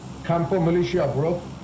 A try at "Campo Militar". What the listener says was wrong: Militar, my friend. Militar. Militia नहीं रहे, militar है देख.